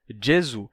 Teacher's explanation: o s final fica mudo o u se torna u Jesus em italiano a gente perde o s final